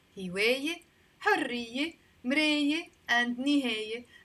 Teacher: words finishing with the letter ye right before the T marbuta, we pronounce them as e, with the e sound in the end.